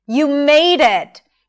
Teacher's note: 'you made it', slowly and higher in pitch.